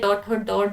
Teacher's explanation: मूर्धन्य की बात करूं तो ये हो जाएंगे ट ठ ड ढ